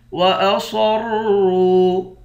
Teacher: را کے بعد واو ہے، واو حروف مدہ ہے، ایک الف کی مقدار کھینچیں گے